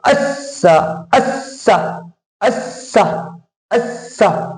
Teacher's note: سین پر تشدید ہے تو تشدید کو آپ سختی سے ٹھہرے سے معلوم ہوتے ہوئے پڑھتے ہیں تاکہ سین جدا جدا پڑھا جائے. یعنی جیسے یہ دو سین جو ہے وہ دو مرتبہ پڑھا جائے گا، ایک حمزہ سے ملا کر ایک خود سے زبر کے ساتھ، تو جدا جدا ہو جائے اس لیے سختی سے اور ٹھہرے سے معلوم، ہلکا سے ٹھہرے سے معلوم ہوں گے.